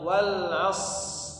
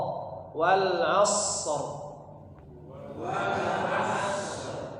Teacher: huruf shad dialirkan dulu suaranya